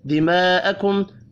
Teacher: دماءکم بڑی مد کو 5 الف کے برابر کھینچ کر پڑھنا ہے. میم ساکن کے بعد واو ہے، اظہار شفی ہوگا، غنہ نہیں ہوگا.